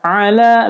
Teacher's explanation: la-nya dibaca panjang karena fathah tegak